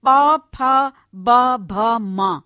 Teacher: उसमें दोनों होठ एक दूसरे का स्पर्श करते हैं और जैसे एक दूसरे को बिल्कुल छू लेते हैं जैसे प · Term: दव्योष्ठ्य